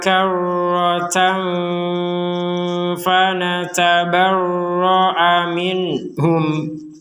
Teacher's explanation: tanwin bertemu Fa kita baca dengan samar